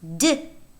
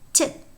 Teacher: D is produced exactly at the same place in the vocal tract as the t, but it is voiced. So d is a voiced alveolar stop.